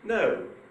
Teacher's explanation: If I say no, that is made up of high and low. If I say no, that's made up of low and high.